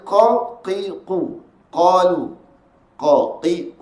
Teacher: huruf kaaf diangkat menekan pada pangkal lidah pada langit lembut sebelah atas langit-langit lembut langit-langit lembut sebelah atas kemudian keluarkan suara sebutannya sifatnya